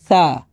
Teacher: জিহ্বার আগা দাঁতের আগা একসাথে লাগছে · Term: সফট সা